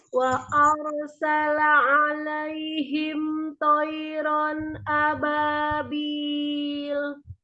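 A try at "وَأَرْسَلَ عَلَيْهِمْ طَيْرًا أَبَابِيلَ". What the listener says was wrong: Ya, tebalkan tonya qoiron wa arsala alaihim tayran ababil.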